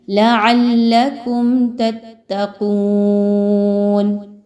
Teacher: یہاں پر کم کے بعد غنہ کرنا بالکل بھی درست نہیں ہوگا، بلکہ جلدی سے تتقون کی ادائیگی کرنی ہے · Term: اظہار شفوی